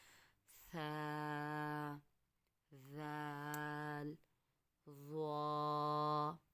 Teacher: اسی طریقے سے سا، زال اور ضا، یہ وہ لفظ ہیں جو نرمی کے ساتھ ادا کریں گے۔ دیکھیں ہلکا سا دانتوں کو کھول کے زبان کی نوک اوپر والے دانتوں کے سروں کے ساتھ لگے گی، بالکل نرمی کے ساتھ ادا کرنا ہے